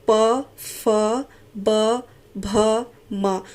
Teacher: तो यहाँ पर एक दूसरे को जो होंठ छू रहे हैं, इसलिए यहाँ पर ये ओष्ठ के जो है उच्चारण स्थान माने जाएंगे। यहाँ पर आपका जो प वर्ग का पूरा जो वर्ण का समूह है वो यहाँ पर ओष्ठ से बोले जाने वाले वर्ण कहलाएंगे।